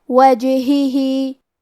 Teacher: کلمت وجہہ میں جیم پہ جزم ہے، لہذا ہمیں جیم کو قلقلہ سے پڑھنا ہے، اور قلقلہ کا معنی ہے حرف ساکن کو ہلانا، تو ہم جیم کو ہلاتے ہوئے یہ کلمہ کو پڑھیں گے